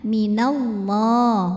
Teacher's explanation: lam pada lafaz Allah dibunyikan secara tafim karena huruf sebelumnya berbaris fathah maka dibacanya ditebalkan pangkal lidah dinaikkan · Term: tafkhim